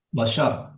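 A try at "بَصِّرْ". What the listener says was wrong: basir bukan basar. Jadi basir. Sukunkan yang di akhir jadi basir.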